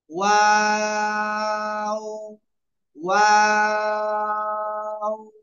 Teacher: দুই ঠোঁট গোল করব, প্রথমেও গোল করব, শেষেও গোল করে পড়বো।